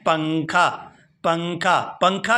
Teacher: پنکھا کی نون کو جب ہم پڑھ رہے ہیں تو آواز ناک میں جا رہی ہے، اسی کو کہتے ہیں کہ نون کی آواز کو ناک میں چھپا کر پڑھنا۔ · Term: اخفا